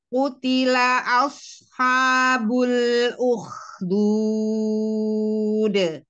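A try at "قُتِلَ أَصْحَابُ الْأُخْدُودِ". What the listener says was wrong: Jangan ditarik ke samping, de, gitu.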